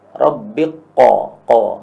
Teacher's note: kafnya hilang jadi langsung setelah ba itu makhrajnya makhraj qaf